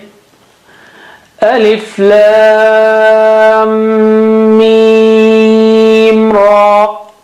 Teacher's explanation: Ra is thick and mim again is mushaddad, so you got to stretch it twice at that juncture.